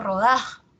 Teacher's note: Que como ustedes han visto, yo lo he pronunciado rodaja, así, ¿no? La mayor fuerza de voz está en da,